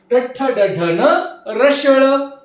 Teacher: मूर्धन्य वर्ण आहेत. बघा तुमचा जिभेचा शेंडा मूर्धेला जाऊन भिडला की मूर्धन्य वर्ण तयार होतात